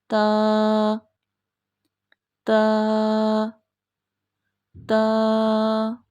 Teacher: जुबान की जो नोक है वो ऊपर वाले जो सामने वाले दो दांत है इनकी जड़ से लगेगी